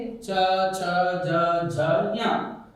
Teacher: इन सबका उच्चारण स्थान अगर आपसे कोई पूछे आप अगर जानना चाहे इनका उच्चारण स्थान है तालू